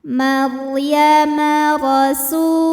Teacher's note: Huruf ra dibunyikan secara tafkhim karena ra-nya ini berbaris di atas, yaitu baris fathah. Maka cara bacanya ditebalkan, pangkal lidah dinaikkan.